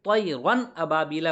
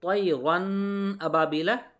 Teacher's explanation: یعنی اظہار ہونے کا مطلب یہ ہے کہ نون کی آواز کو ظاہر کر کے بغیر غنہ کے جلدی پڑھیں گے